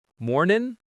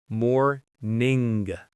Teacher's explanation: Make sure you get that NG sound at the back of your throat. It's not mornin', it's morning.